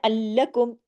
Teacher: लाम पे तशदीद है। डबल लाम है। सख्ती से जोड़ना है। अलकुम ताकि दोनों लाम पढ़ने में आए। · لام پہ تشدید ہے، ڈبل لام ہے، سختی سے جوڑنا ہے ، ولعلکم، تاکہ دونوں لام پڑھنے میں آئے، تہتدون، یہ حق